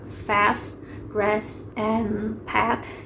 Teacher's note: Flat A itu open front, unrounded vowel dalam kata fast, grass, and path gitu.